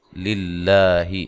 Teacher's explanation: یہ لفظ اللہ کی لام جو ہے اس کو باریک پڑھنا ہے، اس سے پہلے حرف پر زیر ہے